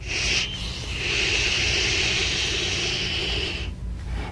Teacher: back of your hand for a complete absence of air sh feel a high pitched wind sensation but no rush of air · unvoiced tongue blade s sound the distant wind likee sound of the sh is made by bringing the side teeth gently together and Sh shushing quietly check with the back of your hand for a complete absence